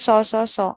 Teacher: अब नेक्स्ट देखो, जो ऊष्म संघर्षी व्यंजन होते हैं वायु निकलती है, तो उसमें ऊष्म संघर्षी जब वायु का यूज होता है, तो सौ सौ सौ इसमें वायु का यूज हो रहा है। महाप्राण हो गए, अघोष हो गया, कंपन नहीं है।